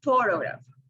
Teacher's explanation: in the first word, we have three syllables, and the word stress is in the first syllable